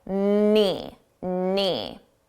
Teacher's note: Notice the K is silent. You don't hear it at all.